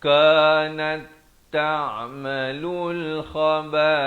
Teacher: dia jadi idgham di sini, masuk ta ke dalam ta. Kanat ta'malul khaba'ith, begitu saja, jangan panjang waqafnya.